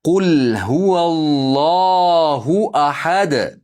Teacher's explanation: To'xtaganligimiz uchun ahad deb qalqala qilib to'xtaymiz.